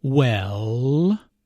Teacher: notice how the vowel is drawn out